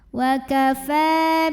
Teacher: Fa mad tabi'i muqaddar karena ada baris fathah panjang di atas huruf fa. Cara bacanya dipanjangkan fa-nya 2 harokat.